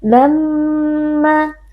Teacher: mim tasydid dibaca dengan berdengung. Lalu ma, ada mad tabi'i karena ada alif yang sebelumnya berharakat fathah, ma kita baca panjang 2 harakat.